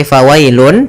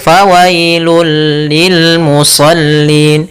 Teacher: bunyi n-nya hilang, langsung masuk ke hurufnya yaitu bunyi lam. Maka fawailul, bukan lagi fawailun, tapi fawailul lil musallin. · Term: idgham bila gunnah